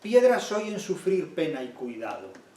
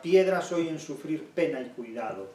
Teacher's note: Esa bilabial oclusiva sorda de piedra y pena, que reitera enormemente el golpe